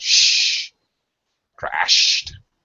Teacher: make sure you stretch stretch that sh sound